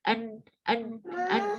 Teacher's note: Tetap kita kasih waktu, dan ketika kita kasih waktu untuk huruf nun dan mim ini tetap kita ada getaran di bagian hidung